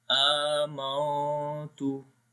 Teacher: A we long due to standing fatha on it. Mim we connect with the noon, and here is ikhfa.